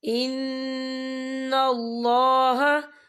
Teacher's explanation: اللہ کا نام پر پڑھا جائے گا کیونکہ اللہ کے نام سے پہلے زبر ہے